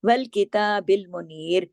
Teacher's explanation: تا کے اوپر کھڑی زبر ہے، ایک الف کی طرح پڑھی جائے گی، ایک الف کے برابر